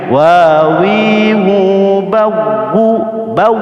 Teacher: Namanya idgham mutamatsilain. Nah, waw mati ketemu waw itu hanya ditekan saja seperti nabar. Misalnya wawi bau, bukan bau, jangan lama-lama, ya.